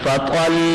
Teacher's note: وقف کریں گے تو 2 پیش جزم سے تبدیل ہو کر وقف بالاسکان کہلائے گا